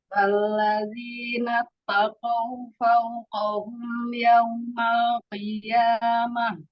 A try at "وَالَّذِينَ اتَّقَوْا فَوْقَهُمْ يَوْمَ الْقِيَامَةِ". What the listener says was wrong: Yaumal tadi qi-nya agak ketebelan waktu pertama.